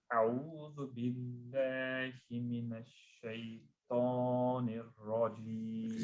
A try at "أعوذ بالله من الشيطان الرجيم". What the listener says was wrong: You know the a'u, just slightly slow it down so that the hamza and the ayn is clearly separated.